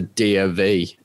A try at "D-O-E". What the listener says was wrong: It sounds like you said D-O-V. D-O-E. D-O-E.